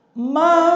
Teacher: Nah sekarang bisa kita mencoba apabila kita membaca nun mati bertemu sod, maka huruf sod itu gigi seri atas bawah itu dipertemukan, lidahnya melekat ke langit-langit, yaitu yang dinamakan sifat idbaq, dan suaranya seperti suara belalang.